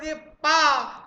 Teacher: दोनों होंठ आपस में आकर मिल जाएंगे अप्पर ओर लोअर लिप्स आपस में आकर मिलेंगे